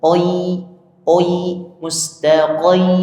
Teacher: Harusnya qo biasa qo qo ka qo qo qo qo mustaqim mustaqim gitu ya. Jadi kita alirkan dari bunyi o ke i.